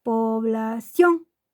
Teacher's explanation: llevan el golpe de voz o la sílaba tónica en la última sílaba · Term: palabras agudas